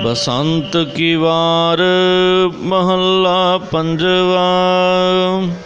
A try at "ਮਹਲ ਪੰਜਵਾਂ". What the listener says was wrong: ਮਹੱਲਾ ਥੋੜਾ ਹਾਂ, ਇਸ ਜਗ੍ਹਾ 'ਤੇ ਗੁਰੂ ਸਾਹਿਬ ਜੀ ਨੇ ਮਹੱਲਾ ਨਹੀਂ ਉਚਾਰਿਆ, ਮਹੱਲ ਉਚਾਰਿਆ। ਮਹੱਲ ਪੰਜਵਾਂ, ਪੰਜਵੇਂ ਸਰੂਪ ਸ੍ਰੀ ਗੁਰੂ ਅਰਜਨ ਦੇਵ ਸਾਹਿਬ ਜੀ ਮਹਾਰਾਜ ਬਸੰਤ ਰਾਗ ਦੀ ਵਾਰ ਨਾਮੇ ਗੁਰਬਾਣੀ ਜੋ ਹੈ ਪ੍ਰਾਰੰਭ ਕਰਦੇ ਹਨ।